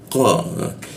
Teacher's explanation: di siku tenggorokan, lidahnya dinaikkan sehingga tidak ada hembusan udara ketika dibaca